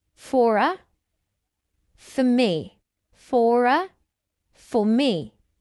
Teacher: One distinctive feature of my accent, the modern RP accent, is that I only pronounce the letter R when it comes before a vowel sound. This is true in individual words and also in connected speech. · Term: linking Rs, linking R's